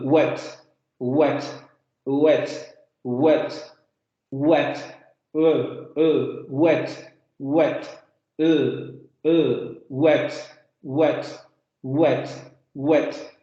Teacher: los labios se van a redondear y la lengua, la parte posterior de la lengua, va a subir hacia el velo del paladar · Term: Aproximante sonora